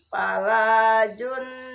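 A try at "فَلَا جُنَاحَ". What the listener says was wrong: Entong li tasiran nuna tasid entong jun tapi junaha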